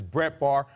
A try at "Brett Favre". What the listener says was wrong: Are you taking the R, and the E off the end now? You said Brett Favre. Just Brett.